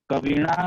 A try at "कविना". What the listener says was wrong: कविणा की कविना। कविना। तवर्ग वाला की तवर्ग वाला,